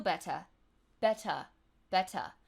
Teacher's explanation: uh where would there would normally be an ER sound so going back to Irish it's just the schwa the ah sound